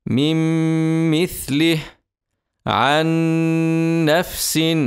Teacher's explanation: وندغم النون الساكنه او نون التنوين الساكنه في الميم او النون ادغاما كاملا بغنه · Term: الادغام الكامل بغنه